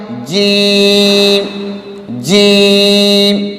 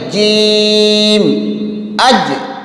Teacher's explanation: جیم کو ادا کرتے ہوئے اس میں ہا کی بو نہیں آنی چاہیے۔ بہت سارے لوگ جیم پڑھتے ہیں لیکن اس میں ہا کی بو آتی ہے، ہا نہیں پڑھی جاتی لیکن ہا کی بو آ جاتی ہے۔